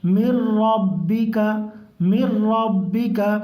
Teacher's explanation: مر ربک، میم کو ڈائریکٹ را میں ملائیں گے، مر ربک، را کو پر پڑھیں گے